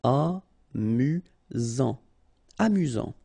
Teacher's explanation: Final T not pronounced. You've got only one S here between the vowels, so it's really this Z sound.